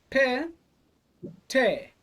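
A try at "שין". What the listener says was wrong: Well done, except it's a shin.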